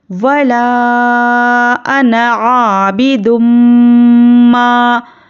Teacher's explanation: पहले गुन्ना करना है, तजदीद वाली में तजदीद है मीम पर, तो यहाँ पर गुन्ना करेंगे। नाक में आवाज़ को थोड़ी देर रोकेंगे और गुन्ने की मिक़दार 1 अलिफ के बराबर है। वला अना आबिदुम मा, आइन और बा पर क्या है, ज़बर है, हरकत को जल्दी पढ़ेंगे।